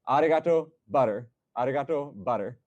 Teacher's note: if you say butter, like I say butter, you're tapping an R when you're saying the T's. That's, again, R and T are relative terms, but you're saying it's the same sound as the Japanese arigato when you're saying butter.